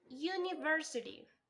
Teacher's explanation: There is primary stress on the third syllable and a secondary stress on the first syllable. The three syllables are unstressed.